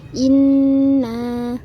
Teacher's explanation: kalau kita waqaf diberhentikan maka panjangnya Jadi dua harokat